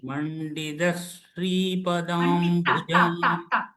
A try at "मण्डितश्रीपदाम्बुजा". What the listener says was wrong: Mandita. Please practice. It is ta. Okay, ta. Ta for Telugu. Ta. Tamila. Ta. Okay, ta. Mandita.